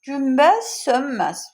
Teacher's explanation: O baş verir ki, n samiti özü m-ya çevrilir.